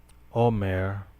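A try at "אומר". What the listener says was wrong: Omer. No. Omer. The accent is on the last syllable. Omer. This is not an omer like counting the omer. This is Omer.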